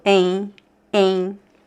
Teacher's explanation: So there's no M sound. It sounds more like two vowels, and it's very nasal. Em, em. And here we don't have the diphthong sound.